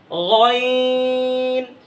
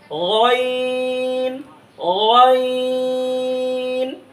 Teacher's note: এই গলার শেষ হইতে গইনও উচ্চারণ হবে